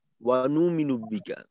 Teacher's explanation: হামজাটা বোঝাই যায় না অনু মিনু অনেকটা ওয়াও এর মতো চলে আসে বা কিছুই থাকে না